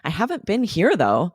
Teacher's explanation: the intonation is very different we're Rising on haven't been here though